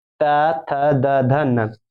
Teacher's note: ये नहीं कि दांतों से बोलता है, जीभ तुम्हारा दांतों में सटता है। जीभ कहां सटता है बच्चों, दांतों में सटता है।